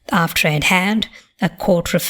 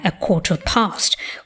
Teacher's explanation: we retained linking r before a following vowel · we retain linking R before a following vowel, as in the phrases after I'd had a quarter of an hour, compare a quarter past, where there is no R.